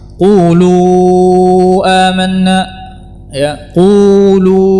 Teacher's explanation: suara yang panjang ini keluar dari al-jawf. Lil jawfi alifun wa ukhtaha wa hi huruf maddin lil hawa'i tantahi.